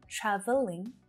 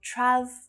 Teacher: traveling with that extra schwa sound in the middle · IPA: /'træ v (ə) liŋ/